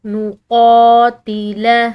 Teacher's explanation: قوف یہ موٹے حروف میں سے ہے، ٹھیک ہے، حلق سے ادا کریں گے